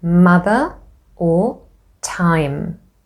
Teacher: Bi meaning two and labial meaning lips. So both lips close and obstruct the airflow, and the air escapes through the nose instead. Notice how the tongue is relaxed inside your mouth when you say the sound. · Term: voiced bilabial nasal